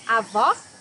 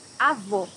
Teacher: Here you have a closed O.